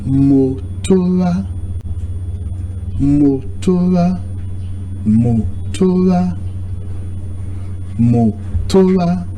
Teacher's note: the O sound is falling. The other O sound is rising. And the last A sound is also rising.